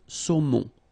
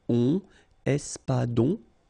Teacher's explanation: O-N in your nose, nasal